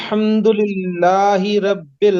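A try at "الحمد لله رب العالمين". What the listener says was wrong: रा को मोटा कीजिए, अल्हम्दुलिल्लाहि रब्बिल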